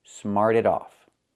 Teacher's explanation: So, smart in the present, in the past, smarted. We hear that T pronounced as a fast D.